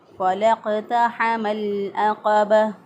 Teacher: लाम को क़ाफ़ के साथ मिला दिया, दोनों अलिफ दरमियान में पढ़ने में नहीं आएंगे